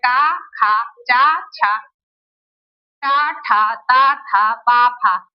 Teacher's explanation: हल्का बहुत मामूली मात्रा में कंपन होता है। इसीलिए इन्हें अघोष कहते हैं। इन वर्णों को बोलने में कंपन कम होता है।